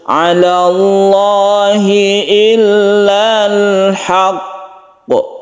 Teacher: Jadi cara membacanya yaitu ala Allahi illal haqq. Jadi ditasydidkan dahulu, ditahan, baru kita qalqalahkan atau kita pantulkan. Tidak langsung illal haqq, itu bukan seperti itu, tapi ditasydidkan dahulu. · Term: qalqalah kubra